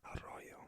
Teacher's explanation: Double R, arroyo, a much longer rolled R sound